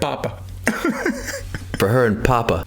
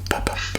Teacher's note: It's such a soft plosive.